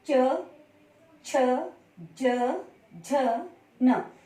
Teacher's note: च वर्ग में आपकी जीभ आपके तालुए के ऊपर वाले हिस्से पे लगती है। तालुए के मतलब तालुआ को स्पर्श करती है।